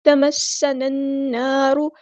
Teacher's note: سین کی سیٹی ہم نے واضح کرنی ہے